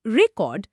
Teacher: যখন আমরা প্রথম সিলেবেলে স্ট্রেস দিয়ে বলছি রেকর্ড তখন সেটা একটা নাউন বা বিশেষ্য। · যখন দ্বিতীয় সিলেবে স্ট্রেস দিয়ে বলছি রেকর্ড তখন সেটা হয়ে যাচ্ছে ভার্ব বা ক্রিয়াপদ